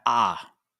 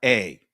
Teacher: the original vowel is the ah that short sound ah not the long sound a